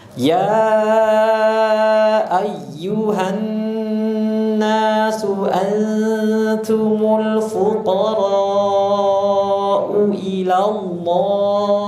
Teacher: Ada nun tasydid, dipanjangkan terlebih dahulu gunanya.